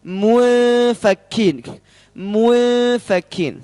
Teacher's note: ada ikhfa, nun sukun bertemu dengan fa. Mufakin, tipiskan.